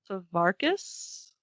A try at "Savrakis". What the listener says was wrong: The R and the A are switched. Savrakis. I would smush the front even more Svrakis.